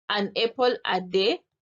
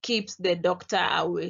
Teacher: a proposition uh is said with the rising intonation and the completion is said with a falling intonation